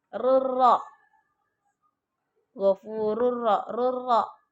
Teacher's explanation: Hukum idgham bila gunnah. Kenapa? Karena tanwin bertemu huruf ra.